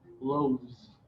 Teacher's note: You can hear the v sound when the word becomes plural.